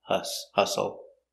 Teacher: Hustle, the T is silent, the U makes the relaxed sound